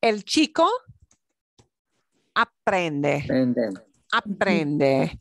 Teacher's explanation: the second to the last syllable is what gets more stress or more emphasis okay second to the last not the last syllable but second